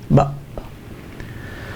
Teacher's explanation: is pronounced by closing the air passage, by bringing the vocal cords together. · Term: glottal stop